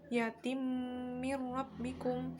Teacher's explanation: Setelah itu pada bacaan yatim mir rabbikum ada bacaan idgham bi gunnah, ada tanwin bertemu dengan mim. Cara baca idgham dengan memasukkan tanwin ke dalam mim sehingga bunyi tanwin hilang berganti dengan mim. Pada mir rabbikum terdapat bacaan idgham bila gunnah, yaitu nun sukun bertemu dengan ra.